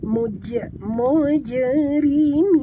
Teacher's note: bunyikan qalqalah pada huruf jim yang mati di tengah kalimah